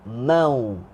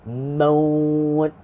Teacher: Lin dia kena lembut kan. Jadi bacaan lin kat sini, ma tenggelam dalam huruf waw